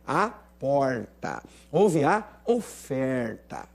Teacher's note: essa oferta e a porta são típicos do R retroflexo, ou seja, o R caipira, o R sertanejo